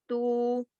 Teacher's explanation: واو خود تو ساکن ہے لیکن اس سے پہلے پیش لگا ہوا ہے، تو اس کی آواز کو کھینچنے میں، حرف کی آواز کو بو، ٹو، سو کھینچنے میں مددگار ہے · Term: حرف مدہ